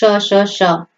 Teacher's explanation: ये आपकी ऊष्म व्यंजन है, ध्वनियां है जिनमें क्या है, जीभ जो है रगड़ खा के निकलती है, तो इसको ऊष्म ध्वनियां कहते हैं।